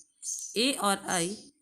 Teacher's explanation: ए और ऐ कंठ और तालु है इसके उच्चारण स्थान